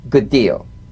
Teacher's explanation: Identical, D to D, good deal. You don't need to fully pronounce the first D like good deal.